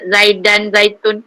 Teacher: La ni zai, ni boleh sebut berdesir. Zai tu dia bukan zal, tak payah nipis kan, tak payah keluar lidah. So macam kita sebut zaidan zaitun, la yuz kan ada dengan desiran tu.